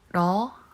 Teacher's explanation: the L sound is tapping against the roof of my mouth